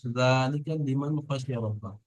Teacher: নুন সাকিনকে বিনা গণনায় তাড়াতাড়ি পড়তে হবে